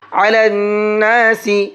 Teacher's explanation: نون کے اندر غنہ کریں گے، یعنی ناک میں آواز روک کر کے پڑھیں گے کیونکہ نون کے اوپر تشدید ہے